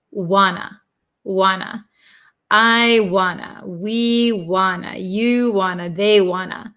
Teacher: want to is contracted to Wana because we get rid of these T sounds and then two usually becomes t t but when we get